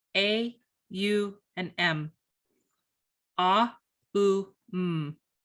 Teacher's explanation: A is made in the very beginning of the mouth, at the back of the throat, and U is made at the very end of the mouth, at the lips.